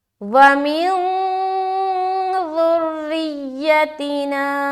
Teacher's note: را باریک رہے گی کیونکہ را کے نیچے کیا ہے؟ زیر ہے